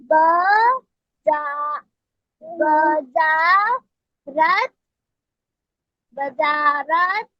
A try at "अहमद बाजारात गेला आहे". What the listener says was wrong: नहीं, ये ब नहीं है, ये तो बा है. बाजा. और ये तो रा है ना. बाजारा. त.